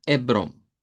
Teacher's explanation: simplemente la e como que la h no está y esa o nasalizada